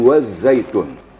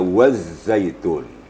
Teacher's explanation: itu ada huruf Za yang sukun yang sama dengan Zaid jadi seakan-akan situ ada huruf ganda yang pertama sukun yang kedua berharkat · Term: tasdid zaai